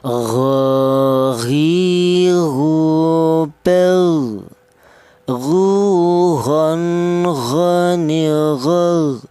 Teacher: termasuk huruf halak tenggorokan bagian atas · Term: huruf ghin